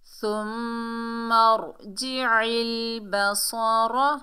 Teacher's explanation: صاد حروف استعلا میں سے ہے، موٹا ادا ہوگا، اور را کو پر پڑھیں گے۔ · عین کے نیچے زیر ہے، آگے لام ساکن ہے، عین کو لام سے ملائیں گے، عین کو حلق کے درمیان سے ادا کریں گے